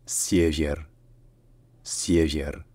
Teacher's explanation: Essayez de faire comme si ça se disait Sie, Vier, sauf que bien entendu, donc le R à la fin c'est un R roulé, et que le deuxième est peut-être en fait plus proche d'un son qui est à mi-chemin entre le I et le E.